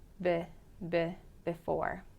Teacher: sometimes it can vary a tiny bit in pronunciation for example in the word before it sounds a little bit closer to a short I